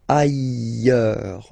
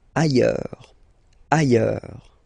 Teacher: final S not pronounced, and then you've got this y sound